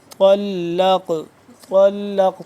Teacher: طا مل رہا ہے لام کے ساتھ لام قاف زبر لق قاف موٹا کر کے پڑھیں گے اور قاف ساکن ہے تو یہ یہاں پہ ہم اس کے اوپر قلقلہ بھی کریں گے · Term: طا موٹا